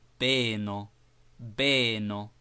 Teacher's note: shortly pronounced but quite pure entirely without the slight drawing e sound often heard after the English vowel